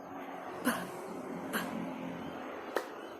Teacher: Gradually, adding the same amount of the VOT at the time, the plosive is eventually a strongly aspirated voiceless bilabial, like p, p.